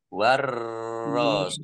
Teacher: Warrosula, alif lam sansiyah, karena tidak dibaca, langsung masuk ke huruf berikutnya, yaitu ro, ditandai ro-nya ada tasdidnya. Ro-nya dibaca double.